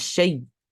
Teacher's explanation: For example, for Imam Hisham and Imam Hamza, when stopping on the word shay, the hamza will change into a ya and then merge into the ya before it, resulting in it being read as shay during waqf. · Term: waqf bil idgham